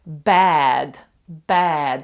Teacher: букву Е відкрито е вона пишеться Ось так у транскрипції і це щось за середнє між між а і е От наприклад bad bad ви бачите як я відкриваю рот Bad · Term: відкрите е